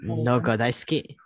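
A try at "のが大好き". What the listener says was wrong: Yes, no ga daisuki. Perfect.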